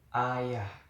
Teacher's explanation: Bunyi vokal A adalah bunyi vokal pusat rendah tak bundar.